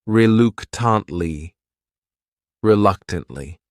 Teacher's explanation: The next word is reluctantly. This word has four syllables and the stress is on that second syllable. That third syllable also has that schwah reluctantly.